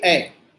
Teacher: अगर जो ए हम बोलते हैं तो हमारी पूरी जीभ मुंह में रखी रहती है, सिर्फ आगे का जीभ का हिस्सा थोड़ा सा ऊपर को हिलता है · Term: अग्र स्वर